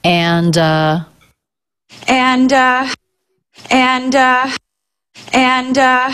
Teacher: the d links right into the next sound which is the uh as in butter sound · it's not that common to hear the d in the word and but she does do it